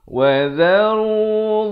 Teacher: Wa dharu, dha di hujung lidah. Wa dharu dha juga di hujung lidah tapi bunyinya tebal.